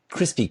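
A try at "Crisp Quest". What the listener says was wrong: Did you say crispy? It sounded like you said crispy.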